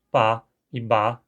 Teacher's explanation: o hunsriqueano não separa [pa] e [ba] como dois fonemas diferentes